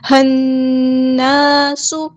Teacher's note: بالکل، یہاں پر جو لام ہے وہ لام شمسیہ ہے، ہم اس کو ظاہر نہیں کریں گے، یا ایوہ الناس نہیں پڑھیں گے، ہنناس۔ نون پہ دیکھیں شد آ گئی ہے، تشدید ہے، شدہ ہے، تو ہم یہاں پہ غنہ کریں گے، 2 کاؤنٹس یہاں پہ رکیں گے، 2 حرکات رکیں گے، ہنناس۔